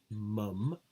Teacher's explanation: the air can get out through the nose forming a nasal stop or simply a nasal · it's a bilabial closure